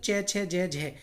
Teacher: ये हमारी तालव्य ध्वनियाँ कहलाती हैं, क्योंकि दोस्तों इनका जो उच्चारण होता है वो तालु से होता है